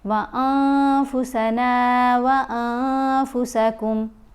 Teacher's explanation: جب نون ساکن یا نون تنوین کے بعد حروف اخفاء میں سے کوئی حرف آتا ہے تو پھر ہم نے نون کی آواز کو ناک میں چھپا کر پڑھنا ہوتا ہے اور 1 الف کی مقدار جتنا ٹھہر کر بھی پڑھنا ہوتا ہے۔ فا، یہاں دونوں جگہوں پر نون ساکن کے بعد فا ہے تو فا حروف اخفاء میں شامل ہے، اس لیے ہم دونوں جگہوں پر نون کو واضح نہیں کر کے پڑھیں گے۔